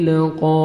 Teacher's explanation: قاف کو موٹا کر کے پڑھنا ہے اور 1 سیکنڈ کھینچنا ہے